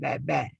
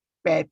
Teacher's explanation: Dua-dua plus bilabial. Tapi satu plus voice dan satu minus voice.